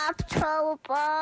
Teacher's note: She has this weird vocal fry she goes into every now and then.